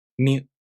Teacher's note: To pronounce Myu, the tongue moves from the [mʲ] consonant to the [ɯ] vowel.